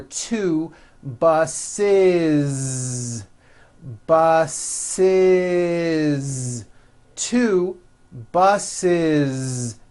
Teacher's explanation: so if you make it plural you're going to add the ending is with a voiced Z